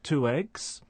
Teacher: a linking w sound, for example, in the phrase 2 eggs